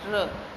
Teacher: सो लुंठित व्यंजन में क्या आता है कि जीभ की नोक मसूड़ों को टच करेगी, जीभ को लपेटकर तालु के द्वारा यह ध्वनि उत्पन्न की जाती है, र। अब जब र बोलोगे देखो जब आपकी जीभ एकदम से लपट जाएगी और क्या होगी आपके तालु उसको टच करेगी तालु को।